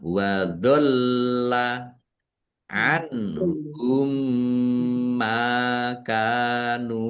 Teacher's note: Mim sukun bertemu dengan huruf mim, idgham mutamatsilain atau idgham mimi, dibaca mendengung, ya mendengung mim, ditandai mimnya ada tasdidnya.